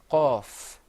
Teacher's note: the qaf is pronounced full-mouthed. You kind of purse your lips a little bit.